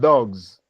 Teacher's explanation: It becomes Z in the word dogs because of the influence or the voiced nature of the sound G which actually comes before the the S sound. So the changes to Z.